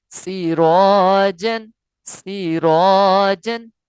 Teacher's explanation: کیونکہ را پر ہے یعنی اس سے پہلے والا حرف پر ہے، لہٰذا اس لیے را کی وجہ سے الف پر پڑھا گیا ہے۔ اور را کیوں پر پڑھا گیا؟ کیونکہ را کے اوپر زبر ہے۔ اس کے بعد جیم تنوین ہے۔